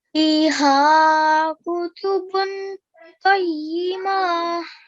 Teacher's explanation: you read the qaf from the middle of your throat and you rounded it a bit